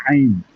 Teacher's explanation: আইনটা তো গলার চেপে উচ্চারণ হবে